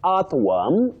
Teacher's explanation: That O and R functions as a diagraph and takes the sound. What we call the long mid central sound.